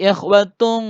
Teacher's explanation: Ikhwatung ini namanya ikhfa, dibaca dengung atau samar ya, samar atau dengung. Ikhwatung bukan ikhwatun atau ikhwatum, tapi ikhwatung ya, namanya ikhfa.